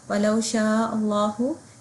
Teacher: لفظ جلالہ سے پہلے جب حمزہ آ رہا ہے تو ہم اس کو ہیوی پڑھیں گے